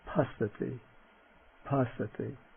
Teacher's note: the labials starting with the voiceless non-aspirate